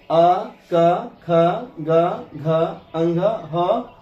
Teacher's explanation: अ क ख ग घ अंग ह और विसर्ग के उच्चारण में हमारी आवाज या ध्वनि कंठ से निकलती है।